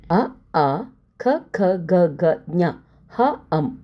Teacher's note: ಇವು ಕಂಠ ಭಾಗದಲ್ಲಿ ಹುಟ್ಟುವುದರಿಂದ ಇವುಗಳನ್ನು ಕಂಠ ವರ್ಣಗಳು ಎಂದು ಹೆಸರು